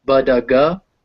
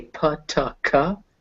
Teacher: voiceless stops, which are P, T, and K, become aspirated, said with a puff of air at the start of a word or a stressed syllable, but not after an S.